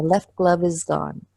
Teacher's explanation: that V connects to the next word